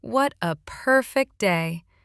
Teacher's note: with that long playful stretch on perfect and a grin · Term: irony